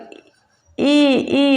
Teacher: यह जो है तालू से उच्चारण होता है इसका उच्चारण स्थान तालू से होता है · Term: तालव्य